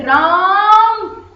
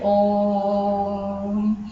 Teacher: जैसे हम जब किसी का नाम लेके पुकारते हैं, जैसे राम, तो इतना लंबा खींचते हैं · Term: प्लुत स्वर